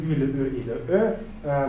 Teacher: Donc, les voyelles antérieures arrondies, c'est donc le U, le E et le E. Donc, les voyelles qui sont articulées à l'avant de la bouche, mais avec les lèvres arrondies